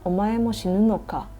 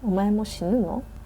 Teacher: even the sentence doesn't have ka, but the intonation goes up, it is a question sentence.